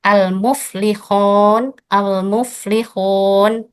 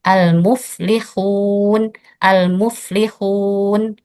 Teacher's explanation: bunyi wau madiyah menjadi bunyi o